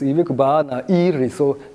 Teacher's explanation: the initial syllable of the noun is realized as a high tone